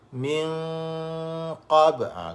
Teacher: Kena sembunyikan. Dan bunyi dengung di sini agak tebal kerana huruf qaf itu tebal. Jadi dengung tu tebal. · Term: Ikhfa hakiki